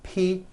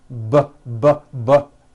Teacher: the only difference is my vocal cords are either vibrating or they're not vibrating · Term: paired consonants